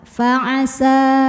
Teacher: berhenti di sa hukumnya adalah Mad thii karena ada Alif alifnya Alif bengkok sebelumnya harakat fathah maka panjang sinnya dua harakat